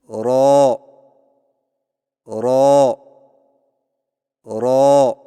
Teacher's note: را کی ادائیگی میں زبان کی نوک کی پشت کو اوپر والے دانتوں کے مسوڑوں سے لگا کر موٹی آواز میں پڑھیں، یعنی رو رو رو۔